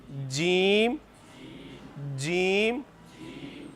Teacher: جیم شین یا زبان کا درمیان اور اس کے مقابل تالو کے ملاپ سے ادا ہوتے ہیں. زبان کا درمیان والا حصہ جب اس کے مقابل اوپر تالو کے ساتھ ٹچ ہوگا نا، آپ ابھی تجربہ کر کے دیکھنا، تو جیم شین اور یا ادا ہوں گے. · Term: جیم کا مخرج